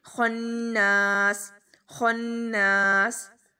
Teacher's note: خوا بہت موٹا پڑھیں گے، نون کے اوپر غنہ کریں گے